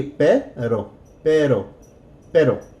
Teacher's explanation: don't forget we're going to roll that R just a little bit.